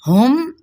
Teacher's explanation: हा अक्सर हलक से अदा करेंगे और मीम पे इज़हार शफ़वी